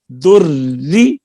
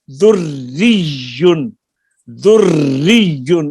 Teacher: اب یہ را سے پہلے پیش ہے تو ہم اس کو پر نہیں پڑھ سکتے کیونکہ را کے نیچے زیر ہے، پہلی را جو ہے وہ دوسری زیر کے تابع ہے، دریون، دریون۔ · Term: را مشدد